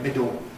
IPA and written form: ˈmɪdo (middle)